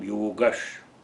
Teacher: So there is sandhi also. Visarga has been transformed into palatal sha on account of the following cha.